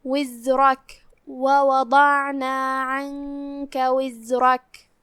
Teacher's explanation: دھیان رہے را کو بھاری آواز سے پڑھنا ہے